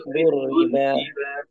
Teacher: র পাতলা হবে, হ্যাঁ রয়ের নিচে কি আছে, কাসরা আছে।